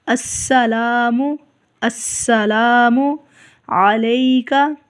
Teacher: سین کے اوپر سیٹی کی آواز نکالیں گے